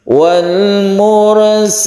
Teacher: Urfa rnya tebal kemudian Fanya ini satu Alif karena Mad Iwat